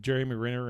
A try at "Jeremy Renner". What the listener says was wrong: You said Mick Renner.